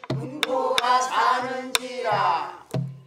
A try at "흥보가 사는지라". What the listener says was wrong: 사는지라 하면 안 되고 지라 지라 불러내려야지 지라 이렇게 운봉 함양 두 얼품에 흥보가 사는지라 이렇게 하나 둘